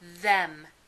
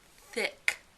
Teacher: the voiced version has vibration in the vocal cords that you can feel in your neck while the voiceless version has no vibration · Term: voiced and voiceless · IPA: θ ð